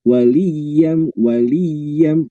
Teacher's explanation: yanya ditasdid sehingga itu mesti ditekan dulu